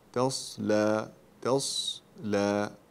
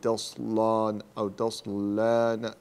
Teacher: اللام مرققة، لا تجعل فيها شبهة التفخيم، لا تقول تصلان أو تصلان، يعني أولها يكون مفخم، يعني اجعل اللام كلها مرققة.